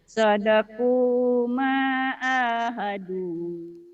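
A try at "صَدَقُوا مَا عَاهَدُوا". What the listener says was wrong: Cuman itu Melayunya ada sadaku, jangan sadaku. Sodaku ma'ahadu. Ayo, sodaku.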